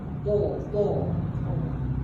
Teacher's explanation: Jadi udara dalam mulut terketul. Ta udara tu terketul. Jadi bunyi dia tebal bulat. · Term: huruf itbak